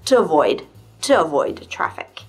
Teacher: that to doesn't need to be stressed, it's just to avoid traffic.